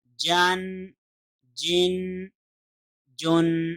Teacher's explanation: جیم کے اوپر جب بھی تنوین آئے تو اس کی آواز تھوڑی سی نون سے مشابہ آئے گی